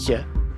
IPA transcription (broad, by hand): ç